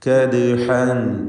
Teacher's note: كدحا എന്ന് പറയുമ്പോൾ ദാലിന് സുക്കൂനാണ്. ഈ ദാലിൻ്റെ സുക്കൂൻ ഖൽഖല സുഗ്റ നൽകി ശബ്ദം ഹറക്കത്ത് പോലെ ചലിപ്പിച്ച് ഉച്ചരിക്കേണ്ടതാണ്